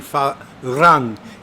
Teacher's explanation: It's a rolled R like a castian R.